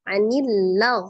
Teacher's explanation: Gin itu termasuk huruf yang dibaca tebal tafkim ya eh dibaca dengan cara mengangkat pangkaliur karenain adalah huruf yang istil